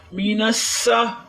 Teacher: سین کو سیٹی کی آواز دیں گے، سین سختی والا حرف ہے